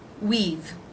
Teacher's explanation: the V consonant sound you've you've been waiting we have we've the W consonant sound the EE as in she vowel and the V consonant